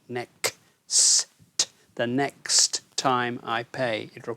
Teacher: there's this difficulty with that end of the word next because you've got k s t